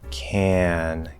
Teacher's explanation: Very minor partial nasalization in the positive